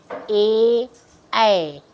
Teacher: ए ऐ यानी कि कंठ और तालु इसका उच्चारण स्थान है, और इसका सूत्र है ए दयितोह कंठ तालु, यानी कि इसका ए और ए का जो उच्चारण होता है, यानी हम बोलते हैं उसको कंठ और तालु दोनों का उसमें योग होता है, ए ऐ।